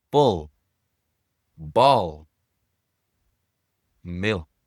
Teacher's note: En anglais, il existe aussi le L sombre après une vowel.